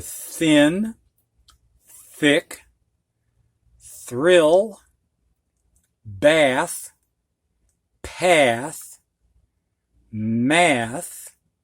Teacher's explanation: with the th unvoiced so with just a breath of air · It's just a breath of air between your tongue and teeth.